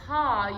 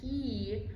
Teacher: When we change from those vowels, that ha to that he, you can even see it visually, you opening and closing that formant. So when you go that ha, you have a nice big, rounded, wide, large formant 2. But when you have that he, you can see your jaw kind of goes in, your tongue goes forward, it makes everything a lot smaller.